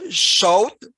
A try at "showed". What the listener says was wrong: I might have a harder D there. Showed. Yeah, I think the T sound. That was the one. I think those are the two. There was 2 T sounds that.